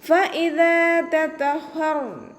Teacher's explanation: മേലെ മുൻപല്ലിൻ്റെ അറ്റം താഴെ ചുണ്ടിൻ്റെ ഉൾവശത്ത് നനഞ്ഞ ഭാഗത്ത് വെച്ചിട്ട് ഉച്ചരിക്കുക. ദാലിൻ്റെ കൂടെ അലിഫ് മദ് വന്നു, 2 കൗണ്ട് നീട്ടിക്കൊടുക്കുക.